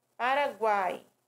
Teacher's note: i é uma semivogal são pronunciadas as semivogais com menos intensidade